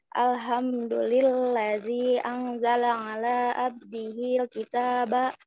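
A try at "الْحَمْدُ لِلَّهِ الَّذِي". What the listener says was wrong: It is alhamdulillahillazi or alhamdulillazi?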